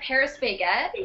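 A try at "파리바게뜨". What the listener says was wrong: it's Perry baget you said Paris I think that's the way they pronounce it in like Korean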